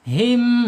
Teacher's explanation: Jadi tenggorokannya di bawah ya, makhraj keluar huruf tersebut dari tenggorokan bawah.